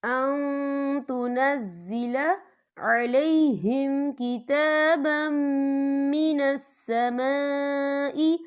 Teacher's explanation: یہاں دیکھیں یہاں نون ساکن ہے، نون ساکن کے بعد جو ہے تا آ رہا ہے، اور تا جو ہے اکفا کا ورڈ ہے، تو ہم یہاں اکفا کریں گے، نون ساکن کی آواز کو ناک میں چھپائیں گے.